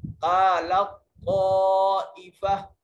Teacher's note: हम इसको कालत ताइफ़ा नहीं पढ़ेंगे, लाम को बराह रास्त तो से मिलाएंगे और तो पर सख्ती से, शद सख्ती से अदा की जाती है